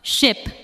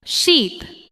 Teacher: In ship, the sound is short and relaxed. In sheep, the sound is longer and the lips may spread slightly.